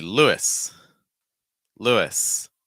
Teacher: you have an oo sound like in soup or two Follow by short I sound